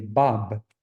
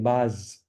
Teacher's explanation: it knows whether you're trying to say bab, where you need bilabial closure, or you're saying baz, where you don't. When you do baz, it doesn't come down.